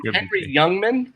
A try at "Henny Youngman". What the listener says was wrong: Henny. It wasn't even. There's no R there. Read it again. There's no R.